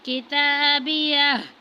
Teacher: فَيَقُولُ هَاؤُمُ اقْرَءُوا كِتَابِيَهْ، تا پر کھڑی زبر ہے، اس کو تھوڑا سے کھینچا ہے۔